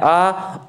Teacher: मुख पूरा खुला रहेगा